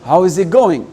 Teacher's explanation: le it là, je l'ai presque effacé. Parce que, c'est-à-dire quand vous allez voir, les gens ils parlent généralement vite.